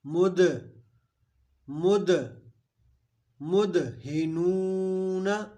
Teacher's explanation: دال حروف قلقلہ ہے تو مد دال کو بالکل آواز کو روک نہیں دینا بلکہ یہاں پہ قلقلہ کریں گے یعنی آواز لوٹتی ہوئی نکلے